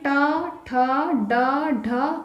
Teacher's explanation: अगला है मूर्धन्य, जो तालु के मूर्धा भाग से बोली जाती है